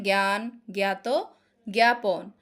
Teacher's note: আ কখনো এ এর মত উচ্চারিত হয়